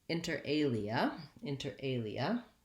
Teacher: It has stress on the second word, alia, that's the prime stress in the phrase. Inter has first syllable stress, so inter alia.